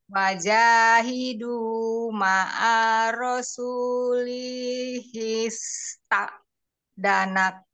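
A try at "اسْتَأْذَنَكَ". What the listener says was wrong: Maka ini A-nya nggak boleh panjang, kemudian hi langsung ke his, tidak boleh ini ya melambat. Wajahidu ma'a rasulis ta'zanaka ulu qawli minhum.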